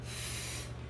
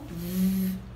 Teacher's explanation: Le phonème F émet le son F. C'est comme si je suis en train de souffler. Le phonème V émet le son V. On sent une vibration V. Comme si je suis en train de conduire une voiture.